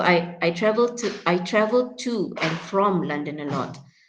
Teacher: in this case, we normally would stress, yeah, on the prepositions. And we say of instead of of.